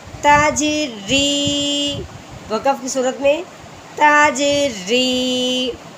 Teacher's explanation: رو کے نیچے زیر آ جائے تو اس رو کو باریک کرتے ہیں